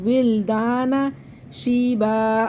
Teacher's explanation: واو کو لام سے ملائیں گے اور اس مدہ کو کھینچ لیں گے